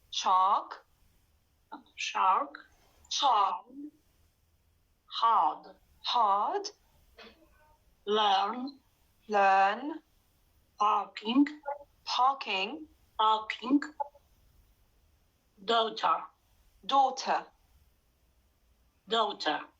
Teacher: you've pronounced the r at the end don't pronounce it in the british